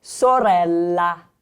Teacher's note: There's a double consonant, so you rest slightly longer on that sound.